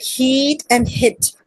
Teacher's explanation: we talk about high front vowels because the sound is made with the front part of the tongue in a raised position